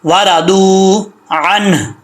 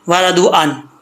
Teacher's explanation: عنہ جب وقف کریں گے تو ہا کا ساؤنڈ لازمی آئے گا.